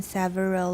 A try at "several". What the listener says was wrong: Several. Okay, first of all, it's not sa, and second, it's only got 2 syllables. Everyone, several. Several.